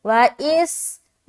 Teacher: सीन में सीटी की आवाज़ आएगी, व इस्माईलु, आइन या ज़ेर ई, यहाँ पर देखिए या साकिन है और उससे पहले ज़ेर है, यानी कि या मद्दा होगा, ई लाम पेश लू, व इस्माईलु।